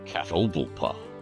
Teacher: Four syllables. Second syllable is the emphasis.